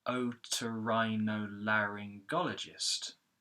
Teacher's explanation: In fact, there are 3 other stresses, and those are called secondary stressed syllables. And the secondary stress syllables are a bit lower in pitch. They're not as high as the main stress, but they really help with the rhythm of speech. · we've got the O, ri, la. Those 3 syllables are secondary stress syllables.